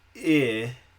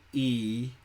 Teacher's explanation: Notice where your tongue is. I feels about mid-level, pretty flat. Now say E, and your tongue has popped up a bit. It's closer to the top of your mouth.